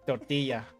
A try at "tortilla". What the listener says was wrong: Tortilla. You have to roll your R's. No. Still Tortilla.